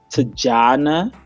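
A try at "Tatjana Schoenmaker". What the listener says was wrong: It's Afrikaans. Definitely, it's Yana. There's no Tajana. Jana. Yeah, Jana.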